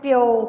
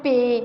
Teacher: ओ स्वर ए स्वर दे विच तब्दील हुंदा है इहदे विच